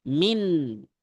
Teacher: Pada nun sukun terdapat gunnah. Dibaca saat terpisah dengan huruf sod.